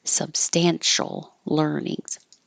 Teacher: This L will connect substantial earnings, so it will sound like substantial learnings.